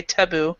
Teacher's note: the first syllable is not stressed as much as the second